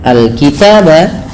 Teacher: Alif lam yang terdapat pada lafal al-kitab dikenal dengan hukum tajwidnya adalah alif lam qamariyah. Alif lam qamariyah yaitu alif lam yang dia dibaca dengan jelas suara lamnya.